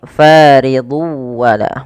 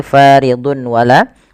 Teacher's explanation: Kita lihat di sini faridu wala, bukan lagi faridun wala, tapi tanwinnya masuk ke waw dan ini kita baca dengan bacaan idgham bi gunnah